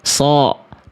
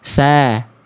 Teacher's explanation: Nah, jadi bayangan melafalkan shod sebenarnya huruf sin, tapi dikasih dengan pangkal lidah. Dilafalkan dengan menaikkan pangkal lidah. So. Kalau gak naik, sa.